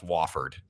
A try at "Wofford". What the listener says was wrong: Yeah, it is Wofford. It's not Wooford. You said Wooford like 5 times.